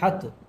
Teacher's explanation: تا کے اوپر کھڑا زبر ہے، پھر اس کو ایک الف کے برابر کھینچ کر پڑھیں گے